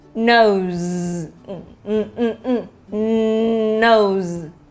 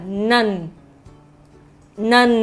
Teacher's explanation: đối với âm n là mình phải đưa lên tới mũi, đẩy lên, đẩy lên.